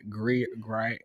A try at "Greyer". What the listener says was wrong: It's not. You can't say Greer because the Y is. I mean, even if the Y is silent, it's not Greer.